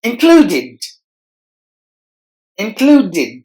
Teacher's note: replace the S sound what does that sound means included included there are three syllables in this word and we have to stress the middle part